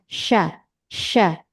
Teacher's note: sya makhraj atau tempat keluarnya berasal dari tengah lidah